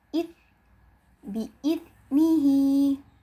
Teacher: Yang membedakan adalah huruf zal ini dia lebih tipis sehingga kita membacanya id. Ingat ujung lidahnya dijepit agar dia terdengar lebih tipis ya daripada huruf zai